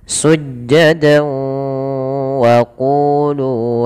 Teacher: masukkan dulu ke huruf wau tanwinnya kemudian ditahan sepanjang dua harakat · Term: idgham bighunah